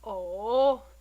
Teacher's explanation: the third is the craziest tone it's a falling and Rising tone at the same time kind of like when you say oh in great disappointment or